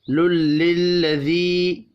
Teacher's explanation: فویل للذین یکتبون الکتاب بأیدیہم، یا لین ہے، للذی یا مدہ ہے، یا مدہ کو ایک الف کے برابر کھینچ کر پڑھیں گے